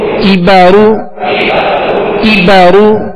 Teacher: کاف کو باریک پڑھنا ہے، یہ ڈنڈی والا کاف ہے، اور را کو پر پڑھنا ہے، را پر پیش ہے